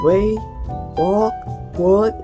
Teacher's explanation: We can also describe the w sound found at the beginning of the way, walk, word as bilabial.